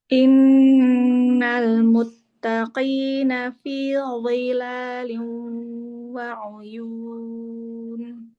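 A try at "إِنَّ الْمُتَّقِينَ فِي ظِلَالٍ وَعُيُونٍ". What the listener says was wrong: Ya, bagus.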